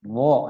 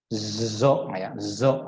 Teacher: Tidak ada desisan di sana karena bukan sofir. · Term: huruf dha